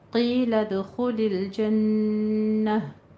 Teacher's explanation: क़ाफ को पुर पढ़ते हुए या मद अदा करें। लद में कलकला करना है।